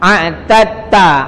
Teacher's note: Jadi ta tu tak dibunyi. Dal tak bunyi.